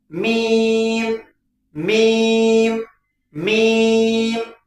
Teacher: दोनों होठ आपस में मिलेगा तो मीम निकल जाएगा